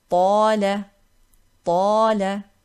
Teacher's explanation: Alif mad here preceded by ta. Ta is the letter of tafkheem, so we make this alif heavy.